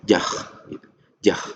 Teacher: makhrajnya itu keluar di bagian atas dekat dengan lisan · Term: kho